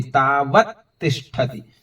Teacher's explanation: तावत अलग है, तिष्ठति अलग है, लेकिन जब बोलेंगे उच्चारण करेंगे तो एक साथ आ जाएगा